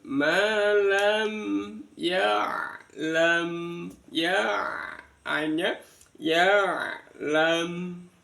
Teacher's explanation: Lah yang ini yang bacaan izhar syafawi, mim sukun bertemu dengan ya. Malam disempurnakan bunyi nya pada saat disukun.